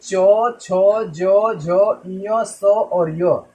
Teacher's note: ये जब भी हम बोलते हैं तो जीभ हमारी तालु को टच करती है, इसे हम तालब्य बोलते हैं।